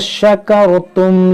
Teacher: यहाँ रा साकिन से पहले ज़बर है, इसको हम पुर पढ़ेंगे यानी मोटा पढ़ेंगे।